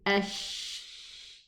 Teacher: The tip of my tongue is just down below the lower teeth, and the middle part of the tongue rises upwards to almost touch the upper palate. Almost. It just comes so close. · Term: exit of the sheen